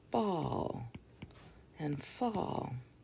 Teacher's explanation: A often says ah in front of an L